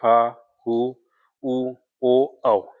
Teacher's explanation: जिन स्वरों का उच्चारण में जीभ का पिछला भाग समानता स्थिति से ऊपर उठता है पश्च स्वर कहते हैं।